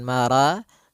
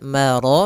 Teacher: Pada lafal maraja, ro-nya tebal disebabkan dia ro yang berharakat fathah